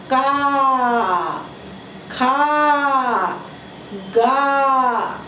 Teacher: जीभ के मूल के पास से उच्चारित होता है। कहाँ से होता है, जीभ के मूल के पास से उच्चारित होता है, यानी कि कहाँ से, कंठ से निकलता है। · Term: कंठ वर्ग